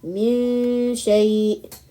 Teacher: The middle of the tongue lightly touches the adjacent roof of the mouth while emitting the gunna, then pronounce the letter Sheen. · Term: Ikhfaa